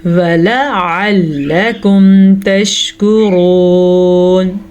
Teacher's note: را کو پر پڑھیں گے، را کے اوپر پیش کی وجہ سے، اور یہ واو مدہ ہے تو اسے ہم کھینچ کے پڑھیں گے۔